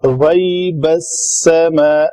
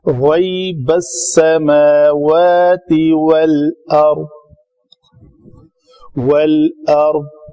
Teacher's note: غین موٹے حروف میں سے ہے، یا لین ہے